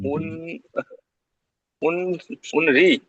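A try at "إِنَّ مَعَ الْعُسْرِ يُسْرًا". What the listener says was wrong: উসরি ওখানে সিন আছে, উসরি ইউসুরা, ইউসুরা। ইন্না মাআল উসরি ইউসুরা, এখানে র দুজাবার রন আছে কিন্তু পড়তে হবে ইউসুর, কারণ দুজাবার আছে, একটা জাবারকে বাদ দিয়ে আলিফ মাথা করে নিতে হবে। ইন্না মাআল উসরি ইউসুরন আছে কিন্তু পড়তে হবে ইউসুর।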